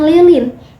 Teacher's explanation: lidah hanya perlu menempel tanpa getaran